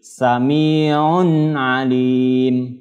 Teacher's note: Bunyi nun domah tanwinnya dibaca jelas. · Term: izhar halqi